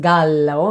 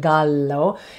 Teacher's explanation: And yes, smarty pants, if you just made the connection between the Spanish word for rooster, gallo, G-A-L-L-O, so in Italian it's pronounced gallo, so two L's is a long L sound